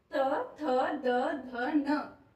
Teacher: लेकिन त वर्ग में त, थ, द, ध, न, जो हमारी जीभ है वो दांत को टच करती है, अंदर की साइड को, है ना, ऊपर वाले दांत को टच करती है, उसका भीतरी भाग को, दांत के भीतर वाले भाग को, जो हमें दिखाई नहीं देता।